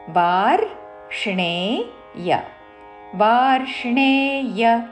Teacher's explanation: రా కి మూర్ధన్య ష వత్తు రాణిలో పలికే ణ వత్తు